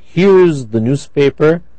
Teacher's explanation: notice the h is not dropped because it is at the beginning of the sentence okay okay we can't drop it here we can't say ears